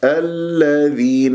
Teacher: اللام هنا اسمية مدغمة مرققة مشددة ما أطيل جريان الصوت فيها